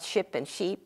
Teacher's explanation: there is a qualitative difference as well but there is definitely a quantity difference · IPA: [ɪ] [iː]